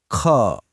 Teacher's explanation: महसूस हुआ हवा का झोंका? यह है महाप्राण।